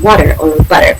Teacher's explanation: the T or D sound can become a quick D sound between vowels in American English